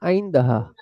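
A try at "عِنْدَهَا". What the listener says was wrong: ওই উচ্চারণ করতে গেলে আলিফটা সামনে চলে আসে কিন্তু আলিফটা উচ্চারণ করবেন না, সরাসরি গলা থেকে উচ্চারণ করবেন।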